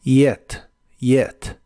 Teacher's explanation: la y del principio no es el sonido J sino que es como una I suave